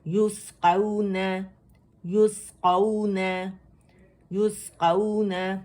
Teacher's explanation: یوس، یوس، یسقون، واو لین ہے کیونکہ واو سکون سے پہلے ہمارے پاس فتح آ رہی ہے، اور قاف موٹا لیٹر ہے، واو باریک لیٹر ہے، ایک کاؤنٹ کے لیے آواز اوپر جائے گی، ٹھیک، قاف کے لیے، اور پھر نرمی سے واو سے ملائیں گے.